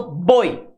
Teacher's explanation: Quando eu falo boi, o O é infinitamente mais forte do que o I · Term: ditongo